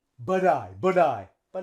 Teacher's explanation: this is called a flap T and we don't pronounce the T fully like a t it's sort of more like a d